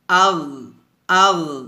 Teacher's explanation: গইনটা মোটা হবে, তবে কলকলা করা যাবে না এভাবে। হামজা গইন জবর আগ, আগ, আগ এভাবে আওয়াজটা ধরে রাখবেন, বের করবেন না, আগ।